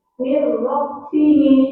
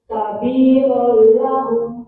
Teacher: Sekarang kita masuk ke bacaan idgham bila guna. Idgham bila guna adalah ketika nun sukun atau tanwin bertemu dengan huruf lam dan ro, maka dibaca tidak mendengung. Ingat ya, bila guna adalah maka dibaca tidak mendengung.